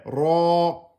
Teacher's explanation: le ra qui est emphatique, plus deux temps avec le alif